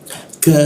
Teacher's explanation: Nah huruf ka itu lidahnya kita turunkan, posisinya di siku tenggorokan, keluar hembusan udara. Ka seperti itu ya, karena rongga udara terbuka.